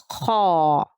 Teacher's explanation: خا کو صحیح اور موٹا ادا کرنے کا طریقہ یہ ہے کہ منہ کا مضبوطی سے دائرہ بنائیں اور آواز کو خا کے مخرج میں اوپر کی طرف اٹھائیں تو خا موٹا ادا ہوگا۔ خا میں خرخر کی آواز باقی رہنی چاہیے۔